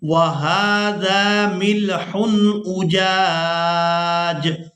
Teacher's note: وقف کی صورت میں جیم کو ساکن کر دیں گے، پہلی جیم کو الف مدہ کی وجہ سے کھینچتے ہوئے اس جیم ساکن کے ساتھ ملائیں گے